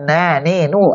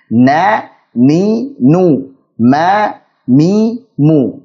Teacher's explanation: Saat kita tutup hidung kita, nah, nih, nu, ada suara yang tertahan di situ. Karena kita tutup hidung kita, maka ada suara yang tertahan. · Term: gunnah